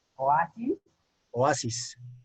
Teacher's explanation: Es una palabra grave. Oasis, la A es la sílaba tónica.